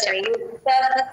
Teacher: సంయుక్తః అః ఇంకొంచెం వినపడాలమ్మ